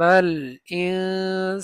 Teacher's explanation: নুন সাকিনের পরে সিন আসছে ইখফার হরফ গুন্না হবে